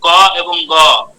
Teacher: এই ধ্বনিগুলোর উচ্চারণকালে নিঃশ্বাস জোরে বের হচ্ছে না। তাই এদের বলা হয় অল্প প্রাণ